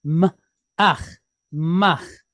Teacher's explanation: Then we have the letter mem, and it's pointed patak, short duration A, with a het at the end